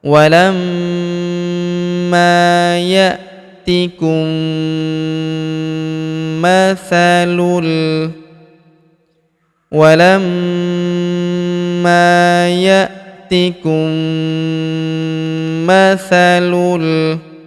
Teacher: Huruf mim sukun bertemu huruf ma berharakat tasydid. Maka mim sukunnya melebur ke huruf ma yang berharakat tasydid. Kita tahan dan kita tekan. serta kita dengungkan dua sampai 3 harakat.